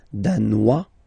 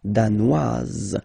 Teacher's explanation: Danois, don't pronounce the final S. Danoise, here you pronounce it.